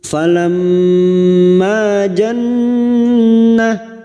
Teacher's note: nun yang bertasdid gunnah musaddadah. Kita dengungkan selama 3 harokat